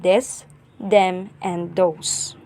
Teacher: the beginning th sound may be replaced with d